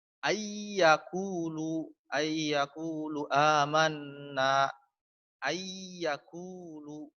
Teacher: Nun matinya hilang karena ditasydidkan ke dalam iya, dimasukkan ke dalam iya. Ayyakulu. Atau nun mati bertemu dengan waw. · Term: idgham bi gunnah